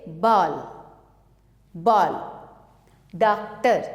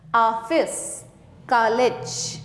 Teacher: यह आ तथा ओ के बीच की ध्वनि है। इसका प्रयोग अंग्रेजी शब्दों के शुद्ध उच्चारण के लिए किया जाता है।